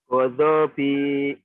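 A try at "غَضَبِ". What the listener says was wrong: Pertanyaannya kenapa dibaca panjang? Berani-berani baca panjang kau. Kenapa? Kan dihentikan. Kenapa? Kan dihentikan nih ya. Nih ya dihentikan nih. Kenapa kau baca adabi? Kan dihentikan.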